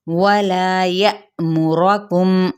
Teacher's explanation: वाव होंठों की ना तमाम गुलाई के साथ